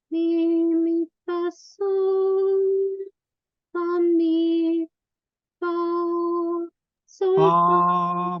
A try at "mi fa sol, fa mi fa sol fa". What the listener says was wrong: Mai sus un pic. Fa un pic mai sus.